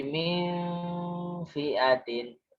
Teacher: Min nunnya samar dan dengung. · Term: ikhfa